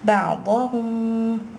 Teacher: You're going to hold the gunna here, ikhfa shafawi happening here